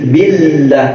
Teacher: A'udzu billah, lamnya tarkik, nggak usah tebel-tebel. Billah, jangan, cukup nempel di huruf lam, itu udah cukup.